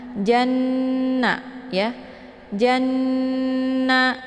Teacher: Jadi cara bacanya itu ditekan janya, kemudian dimasukkan suaranya ke dalam huruf nun atau dileburkan dengan cara ditahan 2 harokat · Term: gunnah musyaddadah